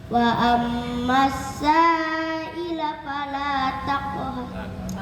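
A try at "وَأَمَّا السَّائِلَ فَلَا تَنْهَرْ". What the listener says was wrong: ulang, sa-nya panjang ya.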